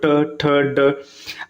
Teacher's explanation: जो दांत के ऊपर मतलब गैप वाला जगह होता है वहां पे स्पर्श कर रहा है उसको मुर्धन्य कहते हैं